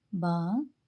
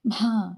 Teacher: ಬಾ ಕಡಿಮೆ ಉಸಿರು ಭಾ ಹೆಚ್ಚಿನ ಉಸಿರನ್ನ ತಗೋತೀವಿ